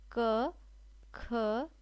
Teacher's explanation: देखिए कंठ से क्या बोलते हैं, क वर्ग को बोलते हैं।